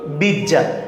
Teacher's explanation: দয় জফলা ছিল, এখানে হয়ে গেছে কি বর্গীয় জ বর্গীয় জ, দুইটা জ